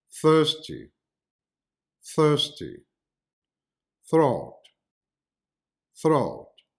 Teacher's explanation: the two dental fricatives the voiceless and the voiced